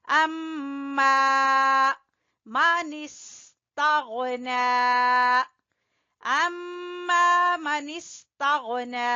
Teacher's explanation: اما میم مشدد کا غنہ کریں گے، پھر الف مدہ کو کھینچیں گے